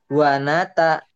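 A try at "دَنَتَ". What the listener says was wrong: dal, bukan wow. Danata.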